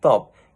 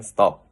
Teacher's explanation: in English the T sound in top is pronunciate with a small brush of air th but [clears throat] not in stop.